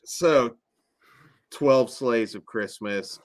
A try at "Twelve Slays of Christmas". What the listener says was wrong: Slays. Say it slowly. You said it too fast and it sounded like another movie.